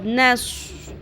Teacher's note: صاد کو پر کرنا ہے